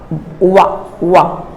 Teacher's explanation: नीचे के ओष्ठ और ऊपर के दांत से बोले जाने वाली ध्वनियां दंतोष्ठ कहलाती हैं